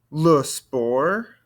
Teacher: Don't want to hear this T on the end of sport.